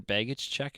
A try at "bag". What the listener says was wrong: Bag. Bag. Bag. You're saying beg. Like I beg you to take my bag.